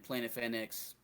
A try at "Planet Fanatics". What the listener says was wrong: Planet Fanatics. You said Planet Fanax, but it's Planet Fanatics.